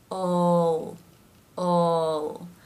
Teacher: the dark L because it's at the end of the syllable, ol.